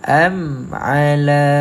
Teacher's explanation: panjang 2 harakat mat asli